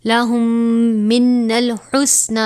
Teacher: میم ساکن کے بعد دوسری میم آئی ہے لہٰذا یہاں پر ادغام شفوی یعنی غنہ کر کے پڑھیں گے